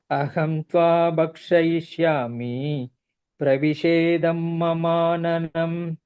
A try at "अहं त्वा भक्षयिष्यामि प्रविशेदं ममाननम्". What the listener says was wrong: The bha there is mahapranah. Bhakshaya. Bhakshayishyami.